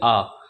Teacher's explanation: जैसे ही हम इस अक्षर को बोलेंगे आ तो इसमें हमारा क्या होता है मुख द्वार पूरा खुलता है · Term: विवत